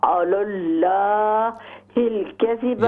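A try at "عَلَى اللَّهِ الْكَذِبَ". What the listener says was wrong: यहाँ लाम को मोटा करें, अलल्लाहिल कज़िबा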